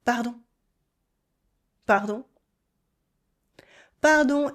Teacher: Once more with a quick rising tone like a tiny reflex.